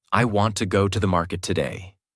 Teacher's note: Want, go, market are strong. Other words become lighter and faster. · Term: rhythm